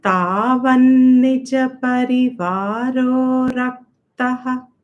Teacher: the half sa is not pronounced because by the Sandhi rule, we broke it and we made it Visarga